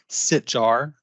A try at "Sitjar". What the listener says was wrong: It's Sitar, the J silent, but